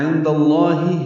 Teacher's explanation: عند اللہ میں نون ساکن کے بعد دال آنے کی وجہ سے اخفا ہوا ہے، دال کی زبر کی وجہ سے لام اسم جلالہ پر پڑیں گے۔